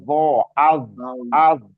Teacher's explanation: Jadi bukan tawalud, bukannya qalqalah, tapi rokhawah, mengalir suaranya.